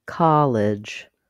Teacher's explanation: in college the first syllable is stressed College the clear vowel is on the C syllable College in